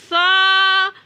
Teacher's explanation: اب یہ جو سا ہے یہ نرمی سے ادا ہوتا ہے، اس کا مخرج یہ ہے کہ زبان کی نوک کو اوپر والے 2 یا 3 دانتوں کے ساتھ لگایا جائے تو سا ادا ہوتا ہے